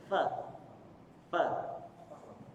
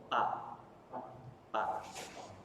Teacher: Tapi fa cukup bibir atas dan gigi bawah.